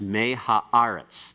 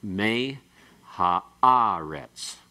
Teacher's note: And so to help out that accent, and to not take away from the primary accent. The primary accent here still occurs on the syllable that has the aleph and the qamets.